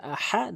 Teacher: এখানে হা হলকের মাঝখান থেকে চাপ দিয়ে উচ্চারণ করবেন